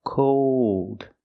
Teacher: With cold, we hear the long O plus a dark L.